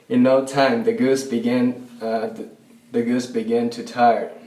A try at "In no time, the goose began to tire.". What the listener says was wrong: In no time, the goose began to tire. His vowel in the word began, it sounds like begin. It sounds like a short I instead of a short A. So he needs to make sure it's began to tire, past tense. Begin is the present tense.